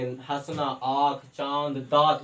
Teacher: हंसना हमारा नाक और मुंह दोनों का प्रयोग होता है, तो इससे जो हमारा जो वर्ण जो बनेगा वहां पे हम लोग चंद्र बिंदु लगाएंगे।